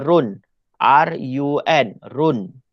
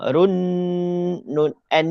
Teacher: Run hamiah tidak ada dengung kena jelas baca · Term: izhar halq